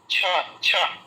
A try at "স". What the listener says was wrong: হ্যাঁ, আপনার ওটা ছয়ের মতো শোনাচ্ছে, ছয়ের যে ওই ছয়ের মতো শোনাচ্ছে। এইটা শোনালে হবে না।